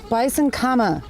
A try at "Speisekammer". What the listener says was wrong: Speisekammer, no N.